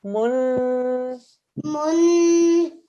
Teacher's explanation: It's a noon mushaddad, so we're going to do 2-second nasal sound.